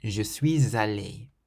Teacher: So the S on the end of suis can liaise with the A at the start of aller.